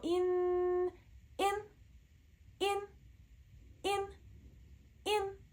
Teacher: also a very short sound no spending time on the N